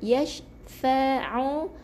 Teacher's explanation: ain dalam tekak kita